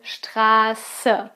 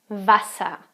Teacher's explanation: Straße, it's a long A, and Wasser is a short A.